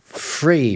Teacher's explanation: He predicted, for example, that the th sound will become a f sound because that's really common in the estuary accent already, which is the accent of Southern England.